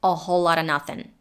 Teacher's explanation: to the schwa at the beginning became the schwa as well in the word nothing the g got dropped and everything was connected together